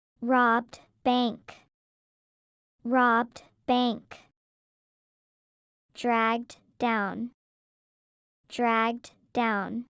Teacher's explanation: In each case, the last phoneme d, of the first word is omitted.